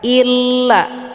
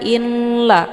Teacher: dengan hukum bacaan Idgham bila ghunah cara bacanya nunnya dileburkan ataupun dimasukkan ke dalam huruf lam dengan cara ditekan illa jadi masuknya di sini secara Kamil tanpa tersisa bunyi nunnya